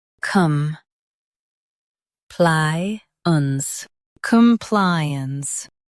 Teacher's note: Stress ply and keep cum soft.